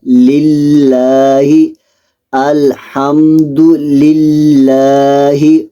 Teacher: اس میں جلالت اللہ عز و جل کے لام کو باریک پڑھنا ہے